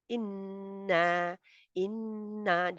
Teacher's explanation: नून और मीम पर शद हो, इन्ना इन्ना ये अकमल गुन्ना होता है